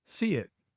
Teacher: native speakers frequently insert a tiny Y or W sound to bridge the gap between the vowels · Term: little glide